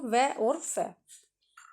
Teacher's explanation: दंतोष्ठ यानी दांत से भी और होठ से भी